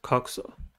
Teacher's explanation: Coxa has two syllables and the stress is at the first one. The first syllable is cox.